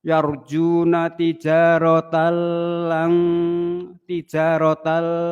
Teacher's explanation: idgham bila ghunah masuk tanpa dengung